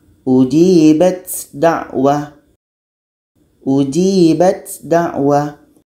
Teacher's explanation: Ta beranginnya masih terdengar, maka belum terjadi idgham kamil.